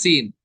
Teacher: सीन अदा होता है जुबान की नोक और दोनों दांतों के अंदरूनी किनारे से सीटी के साथ।